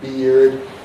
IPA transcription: biːrd